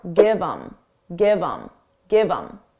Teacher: Get rid of the H and it will sound like im. But you can combine it to the word before.